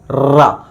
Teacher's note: जैसे हम र का उच्चारण करते हैं तो जीव हमारी थोड़ी सी मुड़ जाती है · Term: लुंठित व्यंजन